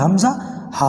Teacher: تو عین ہا اور آخر میں غین اور خا، یہ 6 ورڈ وہ ہیں جو حلق سے ادا ہوتے ہیں، ٹھیک ہے؟ حمزہ ہا، اندر نیچے کی طرف جو ہمارا حلق ہے سینے کی طرف، یہاں سے آواز آتی ہے